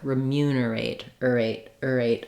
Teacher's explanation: So it still has that A diphthong, but it's short in duration.